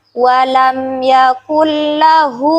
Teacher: Sebab ada huruf ha dhamir yang diapit oleh 2 huruf hidup, yaitu huruf lam dan huruf kaf. Sehingga dia memiliki hukum bacaan mad silah qasirah dan dibaca sepanjang 2 harokat.